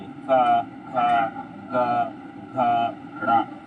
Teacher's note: का से लेकर डा तक जो होगा हमारे कंठ से उच्चारण होते हैं